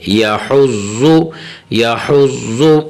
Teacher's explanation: ٹھیک ہے نا, پر کر کے پڑھیں گے, باریک نہیں پڑھیں گے. یا حز اور حرف حا کو باریک کر کے پڑھیں گے.